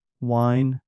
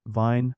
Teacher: The V is with the top teeth on the bottom lip and D is rounder made with the lips.